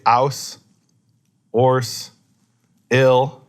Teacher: in certain countries, where they speak English, and certain areas, they say, “-ouse”, “-orse”, “-ill”, they don’t pronounce the H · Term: drop the H sound